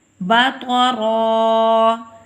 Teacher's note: وقف بالابدال ہوا ہے، ہم اس کی ایک زبر خود ختم کریں گے، اس وجہ سے وقف بالابدال کہلائے گا.